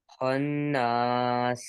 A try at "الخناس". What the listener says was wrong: غنہ پورا رکھنا ہے، غنہ نہیں چھوڑنا.